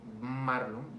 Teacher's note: En la M, aparte de ser bilabial según su punto de articulación, en el modo de articulación es también nasal, porque interviene el paso de aire, se da por la nariz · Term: bilabial y nasal